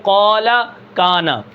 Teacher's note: الف ساکن ہے، پیچھے زبر ہے، تو ہم اس کو بے جھٹکے پڑھ رہے ہیں، یعنی جھٹکا دیے بغیر پڑھ رہے ہیں